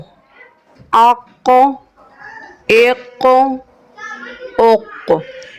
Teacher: قاف کو پر یعنی موٹا پڑھنا ہے اور حرف قلقلہ کا حرف بھی ہے، لہٰذا اس میں قلقلہ خوب ظاہر ہوگا۔